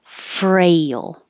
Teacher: exactly the same as 23 fail but with an R so you start with your tongue curled back in the r position